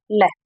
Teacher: दोनों पार्श्वों से हवा निकलेगी। ठीक है, ऐसा नहीं है कि सिर्फ एक से निकले। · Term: पार्श्विक ध्वनि